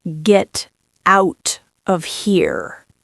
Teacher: Menacing, low pitch, each word is heavy.